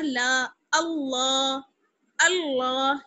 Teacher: حمزہ کو لام سے ملائیں گے کیونکہ تشدید ہے اور کھڑا زبر ہے اس لیے کھینچیں گے. حمزہ لام زبر ال، لام کھڑا زبر لا.